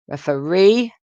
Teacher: referee with a stress on the third syllable